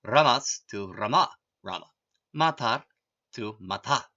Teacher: Visarga, like the Anusvara, the Visarga also appears due to Sandhi. When a word ends in S or an R sound, that sound becomes the Visarga.